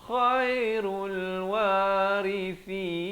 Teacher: kha di hujung kerongkong